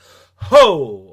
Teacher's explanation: Is it created deep in the throat and then shot straight out like ho?